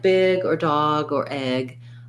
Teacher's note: i want to make sure my voice is on for that g